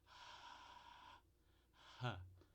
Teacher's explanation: É uma fricativa porque a gente tem esse fluxo contínuo do ar. é desvozeada e o ponto de articulação é ali a passagem de ar nas cordas vocais, que é a glote, né? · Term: fricativa glotal